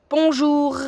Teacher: the back of my tongue touches the back of my throat here, up there.